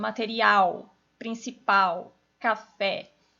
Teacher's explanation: ela é uma oxítona então por exemplo o material principal café em todas elas Eu tenho a última sílaba mais forte